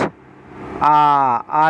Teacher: आ बोलेंगे तो पक्ष मतलब पीछे आपकी जीभ जाएगी